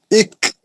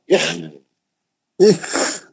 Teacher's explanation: إك نہیں ایک نہیں ہے، کاف نہیں، خا کھردرا آواز